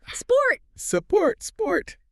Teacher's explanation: while you are hissing, you launch into the P. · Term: snake sound